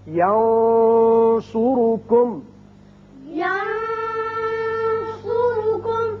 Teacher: یہاں دیکھیے نون پر آپ نے آواز تھوڑی سی گول کر کے موٹی سی نکالی ہے، وہ صاد کی وجہ سے، صاد حروف مستعلیہ میں سے۔